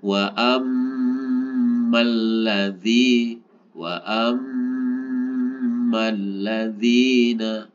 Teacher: Nah, ini sama dengan tadi, mim bertasydid dibaca gunnah